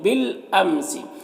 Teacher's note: لام ساکن حرف ہے تو پیچھے والے متحرک حرف با سے مل کر پڑھا جائے گا، یہ الف کو نہیں پڑھیں گے، ٹھیک ہے، یہ الف کو نہیں پڑھیں گے، یہ الف مدہ بھی نہیں ہے۔